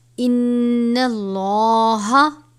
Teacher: لفظ اللہ کے لام سے پہلے زبر ہے تو لام کو پر پڑھا جائے گا